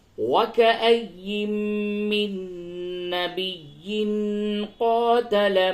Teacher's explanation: اور تنوین کے بعد قاف ہے، یہاں پہ اخفا ہوگا